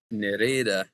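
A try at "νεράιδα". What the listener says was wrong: nope, it's not eh. This is pronounced like an ah. No, because the stress is on the alpha.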